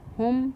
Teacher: شفوی ہو رہا ہے، تو ہم یہاں پر پڑھیں گے ہم، میم ساکن کی آواز کو ظاہر کر کے پڑھیں گے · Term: اظہار شفوی